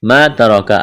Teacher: ما ترکا الف مدہ ہے, ایک الف کے برابر کھینچنا ہے. را کو موٹا کرنا ہے. کاف کو باریک کرنا ہے.